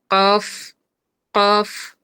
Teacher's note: আর একটা মজার বিষয় হলো যে কফ উচ্চারণ করার সময় কিন্তু কফ অক্ষরটাকে যদি বানান করি আমি, তাহলে শেষ অক্ষরটা হবে ফা, কফ, কফ। জিহ্বার গোড়া থেকে উচ্চারিত হবে কফ, কিন্তু শেষ হবে এই যে ফা, কফ, কফ।